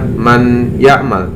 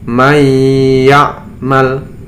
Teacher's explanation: Ya, suara nunnya terasa dihunahkan, tetapi yang dapat hurufnya adalah huruf ya. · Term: idgham bihunnah